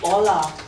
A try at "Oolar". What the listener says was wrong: Okay, the R should be pronounced. Oolar.